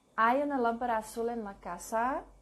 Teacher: When spoken, it should be pronounced with a rising intonation.